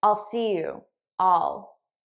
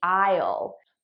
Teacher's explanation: I'm actually saying all which is the unstressed pronunciation the stress pronunciation would be aisle but naturally I would just say all I'll see you all